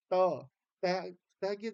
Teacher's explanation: जो स्थित आपके विभिन्न स्थान है उनको जब स्पर्श करती है जैसे दांत का स्पर्श कर रही है जीभ · जीभ आपकी जो है वो दांतों को स्पर्श कर रही है। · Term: स्पर्श वर्ण